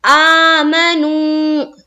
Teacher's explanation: میم زبر ما نہیں کھینچنا ہے، نون وا پیش نو یہاں پر کھینچیں گے، واو مدہ کا قاعدہ، واو ساکن اور اس سے پہلے پیش۔